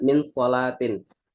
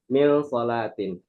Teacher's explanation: nun mati ketemu so itu dia harus didengungkan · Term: ikhfa hakiki